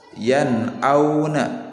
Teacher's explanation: Nunnya dibaca dengan jelas, tidak boleh yan auna, tidak boleh ditahan, tidak boleh didengungkan ya. Apalagi didengungkan seperti ini, ya auna, itu tidak boleh. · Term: huruf izhar